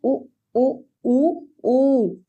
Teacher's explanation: पहले एक मात्रा में आवाज कर रहा है, फिर एक मात्रा में आवाज कर रहा है, उसके बाद ये दुगनी मात्रा में आवाज कर रहा है